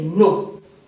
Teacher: if you respond and say no that is falling intonation